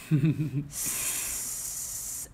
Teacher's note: A Z is only an S with voice. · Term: voiced S